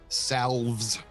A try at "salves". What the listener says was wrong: It's a silent L, don't say that.